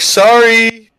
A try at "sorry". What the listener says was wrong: Sori. Yeah, stop putting a fucking U in your goddamn sorries, all right?